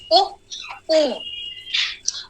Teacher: उ को आप ज्यादा देर उच्चार करेंगे तो दीर्घ उ बन जाएगा